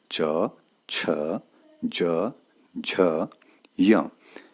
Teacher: तालव्य, तालु, मुंह के भीतर की ऊपरी छत का पिछला भाग